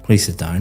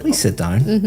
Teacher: a bit serious. But if I said, please sit down, my intonation is going up. · For example, when you came in here today and I said, please sit down, very flat intonation going down